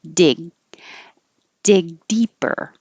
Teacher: instead of pulling your tongue down for the G, hold it up there.